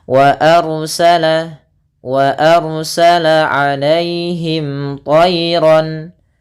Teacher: Tayran, ro-nya kita baca tebal, diwarnai warna biru, artinya ro-nya kita baca dengan bacaan tafkhim, yaitu tebal